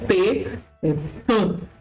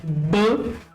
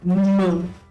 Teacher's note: Mesmo ponto de articulação bilabial. Os lábios se juntam e o som sai